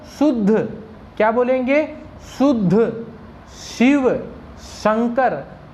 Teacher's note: इसको बोलते समय आपकी जीभ तालु पे लगनी चाहिए। जहां से च बोला जाता है वहीं से बोला जाता है स। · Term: तालव्य स